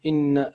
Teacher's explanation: نقرأ إن هكذا بشكل طبيعي يعني مع الشدة، لكن لا نطول كما نطول في قراءة القرآن الكريم